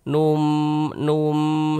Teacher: Kita tahan, kita panjangkan sejenak. Kita panjangkan kira-kira sepanjang dua harakat. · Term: idgham bighunah